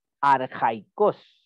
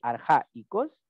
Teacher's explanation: Queremos marcar que aquí no hay diptongo. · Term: diéresis